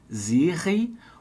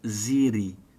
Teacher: Pode fazer o R vibrando aqui, o sininho dentro da boca, Siri, ou a ponta da língua, Siri.